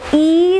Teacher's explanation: it is unrounded front closed vowel sound